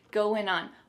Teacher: we're gonna drop that G at the end of the word going